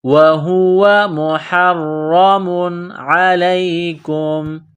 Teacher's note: کو موٹا کرنا ہے، را میں سختی کرنی ہے، مُحَرَّمٌ عَلَيْكُمْ، تنوین کے بعد حروف حلقی ہے، عین ہے تو یہاں تنوین پر غنہ نہیں کریں گے